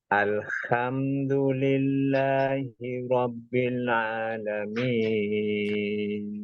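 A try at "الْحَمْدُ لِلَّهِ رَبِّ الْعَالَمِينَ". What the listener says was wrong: huruf ainnya rabbil alamin sempurnakan dua harakatnya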